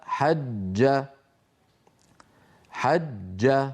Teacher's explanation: ينحبس الصوت خلف وسط اللسان ويهتز الوتران صوتيا عند نطق الجيم المشدده · عندما بدايه النطق ينقفل مخرج الجيم من وسط اللسان فيتجمع الصوت خلف وسط اللسان ويمثله على الصوره الاسهم البيضاء التي وقفت خلف وسط اللسان فاذا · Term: الجيم المشددة